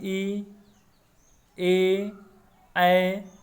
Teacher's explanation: ऐसा स्वर जो जिह्वा के अग्र भाग यानी कि आगे वाले भाग से उच्चारण हो, उसे क्या कहते हैं? अग्र स्वर कहते हैं